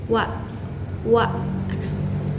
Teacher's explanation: Huruf Wa ini keluar kalau misalnya dua bibir dengan sedikit bulatan mulut. Dia juga bersifat majhur. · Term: huruf Waw